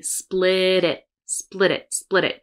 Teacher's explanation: Again, we have a flap for the T.